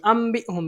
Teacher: نون ساکن تنوین کے بعد حرف با ہے، اقلاب ہوگا، نون ساکن کو میم سے بدلیں گے